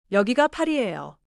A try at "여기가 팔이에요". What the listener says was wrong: 팔이에요에서 리을 받침이 너무 길지 않게 팔이에요.